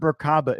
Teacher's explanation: generally you pronounce it as if the three syllables are separate, with equal accents on each